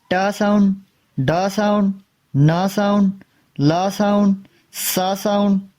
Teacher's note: Alveolar साउंड produced by raising the tip of tongue to the alveolar ridge. That is the right behind the upper front teeth called alveolar ridge.